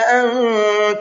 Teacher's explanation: انت کے نون میں اخفا کریں گے اس لیے کہ نون ساکن کے بعد میں تا ہے اور تا اخفا کے حرفوں میں سے ہے۔